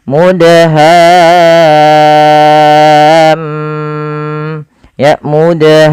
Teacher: suara mimnya kita tahan ya teman-teman kita tahan sepanjang berapa harakat sepanjang dua harakat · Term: gunahnya